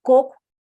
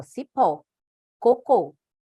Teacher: a sílaba mais forte não é a última, é a penúltima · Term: paroxítona